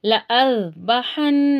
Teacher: ہا کو واضح کریں گے، نون پر تشدید غنہ کریں گے